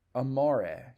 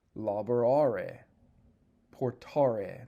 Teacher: That second principal part, which is called the infinitive form, ends in a long ARE. That long A before the RE is called the connecting vowel.